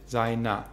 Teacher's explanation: Seiner mit a-schwa am Ende